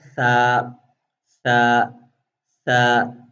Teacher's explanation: سا کو پروناؤنس کرتے وقت ایک چیز کا خیال رکھا جائے کہ وسل ساؤنڈ نہیں آنی چاہیے. ہم سا جب پڑھیں تو سا سی ٹی کی آواز وسل ساؤنڈ یہ نہ آئے.